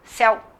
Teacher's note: Você quase não pronuncia o u